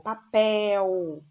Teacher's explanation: Olha a sílaba tônica no pel aqui, ela é uma oxítona